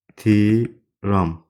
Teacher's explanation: Ehtiram sözündə t d-ya çevrilmir. Ehtimal, ehtişam, ehtiram bu sözlər yazıldığı kimi də tələffüz olunur.